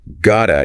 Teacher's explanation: got to often becomes gota in casual speech. And the to before a vowel sound can sometimes just melt away.